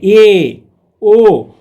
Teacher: जैसे आप बोल करके खुद से देखिए ए, ओ, तो देखिए इसको समृद्ध मतलब ओठ का गोलाकार आकार किसी में ज़्यादा किसी में कम, तो ये और वो का उच्चारण स्थान अर्ध समृद्ध होता है, मतलब आधा गोलाकार होता है ओठ का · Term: अर्ध समृद्ध स्वर